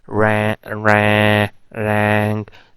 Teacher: in some varieties people say like ra rank they also nasalized the vowels as well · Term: nasalization